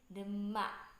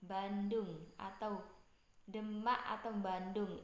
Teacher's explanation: orang Jawa biasanya mengucapkan dengan awalan bunyi sengau